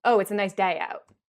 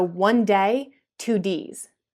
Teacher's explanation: So this, where the sound A, as in day, gets produced sort of like A, so it gets lowered when it's in an open syllable. So day. Oh, it's a nice day out. Oh. But when that syllable gets closed, it raises up to like E. So one day, two Ds. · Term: allophonic rule